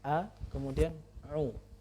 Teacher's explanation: sering sekali orang membacanya a'udzubillah atau jadi dua-duanya ain. Harusnya dia hamzah dulu, a, kemudian a'u.